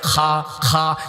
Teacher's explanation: যেখানে আলাজিবা আছে, কাশ হয়, ওইখান থেকে খা উচ্চারণ হয়